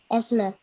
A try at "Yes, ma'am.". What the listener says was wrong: So this happens because we don't realize that we're saying it as S ma'am or something.